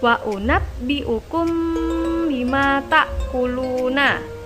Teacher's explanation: Ikhfa artinya samar, dan syafawi artinya 2 bibir. Karena ikhfa syafawi adalah setiap mim sukun bertemu ba, sehingga bacaannya berkumpul di 2 bibir. Cara membacanya memasukkan ke dalam huruf setelahnya seperti berharokat tasydid.